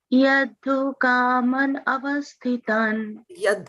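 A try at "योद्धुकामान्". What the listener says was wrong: Not yadhu, it's yodhu.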